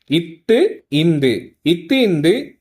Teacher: இரு மெய்களும் மேல்வாய் பல்லின் அடியை நாக்கின் நுனி பொருந்துவதால் பிறக்கிறது